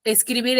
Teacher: tiene la mayor fuerza de voz en la última sílaba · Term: aguda